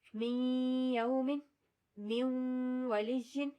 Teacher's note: جو آتا ہے یا اور واؤ کے ساتھ, اس میں یا اور واؤ کی ساؤنڈ بھی آنی چاہیے. من یوم, من ولیجن, یعنی غنہ بھی ہو اور یا اور واؤ کو بھی ادا کیا جائے.